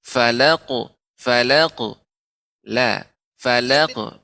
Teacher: Fokus ke kofnya loh. Ya, kofnya sudah bagus, sudah tebal, akan tapi lamnya tidak boleh, nggak boleh terpengaruh menjadi tebal